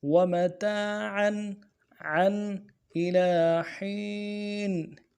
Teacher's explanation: عین کے اوپر تنوین ہے، تنوین کو اظہار کے ساتھ پڑھیں گے، آگے حروف حلقے میں سے آ رہا ہے۔